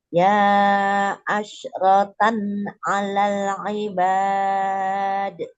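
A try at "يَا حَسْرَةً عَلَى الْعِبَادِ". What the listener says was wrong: Bukan ya asrotan, di situ huruf H langsung. Tadi ada penambahan huruf. Ya has, tadi ada ya asrotan. Ya hasratan alal ibad. Ya ha, langsung ke huruf H. Ya hasrotan.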